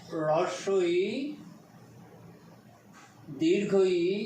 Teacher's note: হ্রস্বই, দীর্ঘই, এদের উচ্চারণ স্থান হচ্ছে তালু। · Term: তালব্য বর্ণ